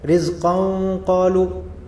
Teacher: Jadi rizqan seperti ada nunnya disembunyikan. Nunnya tanwin, nunnya disembunyikan. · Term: ikhfa